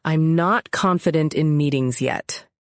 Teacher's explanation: I hear extra stress on confident and yet.